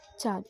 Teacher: চন্দ্রবিন্দু উপরে থাকলে আমরা নাকি সুরে বলবো চাঁদ, ঠিক আছে। কোনো শব্দের মাঝে যখন চন্দ্রবিন্দু থাকে তখন সেই শব্দটাকে আমরা নাকি সুরে বলবো।